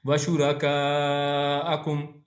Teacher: طرح سے پڑھنا ہے۔ اسی طرح شرکا یہ مد آیا اور مد کے بعد حمزہ ہے تو یہاں پر مد کو ہم نے لمبا کرنا ہے